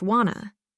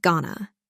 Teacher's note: listen to how words change when native speakers talk fast practice common phrases like want to often pronounced Wana and going to often pronounced Gana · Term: connected speech